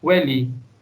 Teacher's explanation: the sound of the letter v is always replaced with the sound of the letter w